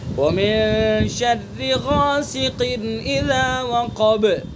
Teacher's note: قاف کو پر پڑھیں گے چونکہ حروف مستعلیہ میں سے